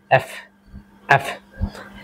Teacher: এটা যখন আমরা উচ্চারণ করব আমাদের যে উপরের দাঁত রয়েছে সেটা নিচের ঠোঁটের সঙ্গে টাচ করবে